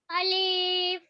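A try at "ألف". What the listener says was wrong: अलीफ को लंबा नहीं करते हैं।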